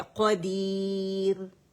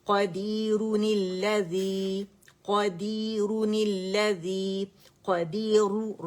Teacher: रा बारीक पड़ी जाएगी क्योंकि रा सुकून से पहले या मद्दा आ गया